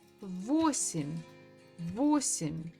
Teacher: So again, the stress falls on O.